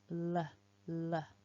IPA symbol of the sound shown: l